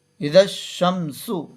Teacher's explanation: تو لام اس میں پڑھنے میں نہیں آیا ہے، اسے روانگی کے ساتھ پڑھتے ہیں۔ · ذال کو ہم نے شین سے ملا دیا، لام حذف ہو گیا، اس کی آواز بالکل بند ہو گئی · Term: ادغام, لام تعریف کا ادغام